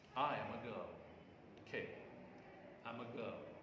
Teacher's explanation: On girl, because girl is the last accented syllable in this tone group. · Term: Falling tone